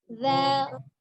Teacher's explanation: bunyi za ujung lidahnya ada di ujung gigi seri bagian atas ya, tetapi dengan tidak mengangkat pangkal lidah. Sifat huruf zal adalah rogoh lembut, jadi za ya, bukan za, tapi za lembut.